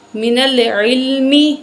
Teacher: نون کو لام سے ملائیں گے